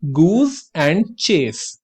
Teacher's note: यहां पे आपका एस वाउल्स के बीच में आ रहा है, बट फिर भी वो ज की नहीं सा की आवाज दे रहा है।